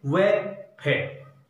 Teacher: व एवं फे का उच्चारण करते समय नीचे का ओष्ठ ऊपर वाले दांतों को स्पर्श करता है , इस वजह से दंतोष्ठीय व्यंजन। तो हमसे पेपर में सीधा